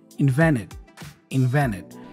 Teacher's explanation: You see again, invented, we have that N and T combination. The T goes away, so I pronounce only the N.